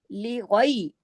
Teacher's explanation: یا لین ہے، اس کو غے نہیں پڑھیں گے، غے، غے غلط ہے، مجہول لہجہ ہے